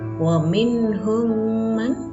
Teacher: mim sukun bertemu dengan mim, hukum bacaannya adalah idgham mimi, cara membacanya ditahan 2 harokat.